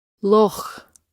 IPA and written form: lɔx (Loch)